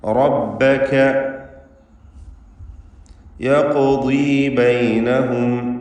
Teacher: റാഇനെ തഫ്ഖീം ചെയ്യുമ്പോൾ ശേഷമുള്ള ബായിൽ ആ തഫ്ഖീം വരുന്നത് സൂക്ഷിക്കേണ്ടതാണ്. അഥവാ ബാ തർക്കീഖ് ചെയ്യേണ്ട ഇസ്തിഫാലിൻ്റെ ഹർഫ്, ശേഷമുള്ള കാഫുമല്ല.